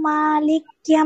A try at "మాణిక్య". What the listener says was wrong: మాణిక్య అండి, లా కాదు, పొరపాటున లకారం పలికారు అక్కడ.